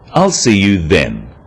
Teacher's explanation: This is now a definite commitment and an end to the arrangement. Notice how the stress is on the word then to confirm that the time is definite.